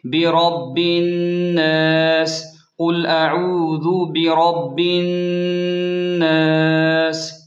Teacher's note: جب ہم آیت کے آخر میں رکیں گے تو سین کی زیر ختم ہو جائے گی، سین ساکن ہو جائے گی اور سین پر سیٹی کی آواز واضح ہوگی